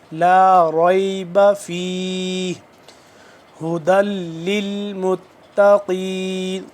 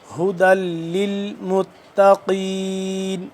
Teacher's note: یہ ہا سینے کے پاس سے اور حلق کے نیچے والے حصے سے ادا ہوگا